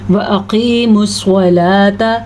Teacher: قاف کو موٹا کر کے پڑھنا ہے، صاد کو موٹا کر کے پڑھنا ہے